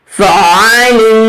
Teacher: عین middle throat سے اور رگڑ کر اس کی آواز آئے گی اسکویز کر کے